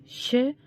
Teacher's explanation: ऊष्म व्यंजन है जिसका उच्चारण स्थान तालु है